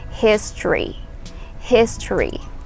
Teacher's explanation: History. So imagine you're removing the O sound.